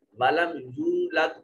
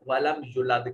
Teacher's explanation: यू को लंबा करना था, वाव साकिन माकबल मजमूम वाव मद्दा थी, लेकिन मद्दा नहीं किया, जल्दी से पढ़ दिया वलम युलद, तो माना बदल गया और एक हर्फ इससे कम हो गया।